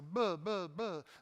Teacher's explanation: voiced bilabial, right, where you put the lips together, and then as the air goes by the vocal cords, you let them buzz